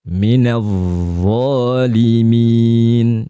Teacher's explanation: makhrajnya dha ya, ujung lidah ketemu ujung gigi ya